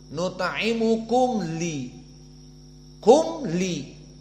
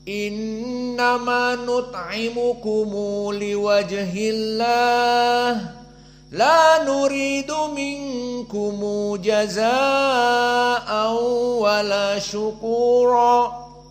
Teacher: nut'imukum dan minkum dibaca silatul mim, maknanya didhammahkan, tidak disukunkan mimnya, sehingga hukumnya bukan idhar syafawi seperti qiraah jumhur, nut'imukum li, kum li idhar syafawi, dan juga minkum jaza, kum ja.